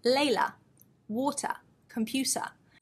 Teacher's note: Very clearly, you can hear we have the schwa sound at the end, the lazy vowel sound.